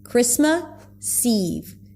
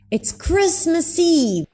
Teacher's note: When he connects it to the next word, it feels like the S begins the next word.